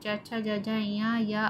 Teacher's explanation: तालु और जीभ के स्पर्श से बोले जाने वाले वर्ण तालव्य कहलाते हैं।